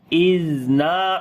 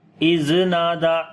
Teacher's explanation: زال کو نرم پڑھیں گے اور زال کے اوپر صفت رخاوت بھی ہوگی، یعنی کہ آواز کو جاری کر کے پڑھیں گے اور آواز کے اندر نرمی آئے گی